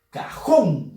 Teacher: Fuerza de voz en la sílaba jón. Termina en N.